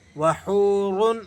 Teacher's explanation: را کو آپ نے پر پڑھنا ہے موٹا کر کے